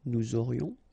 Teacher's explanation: final S not pronounced, and then you get this liaison, nous aurions